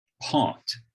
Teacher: don't have to aspirate to make a distinction in portuguese but my portuguese p is very close in its vot to the english b · i don't aspirate or it's not i don't have to aspirate to make a distinction in portuguese